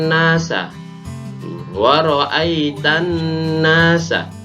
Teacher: langsung masuk pada nun, alnya tidak terbaca. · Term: alif lam syamsiyah